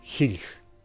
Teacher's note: the pronunciation of short /e/ as /i/ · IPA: /xiɮ/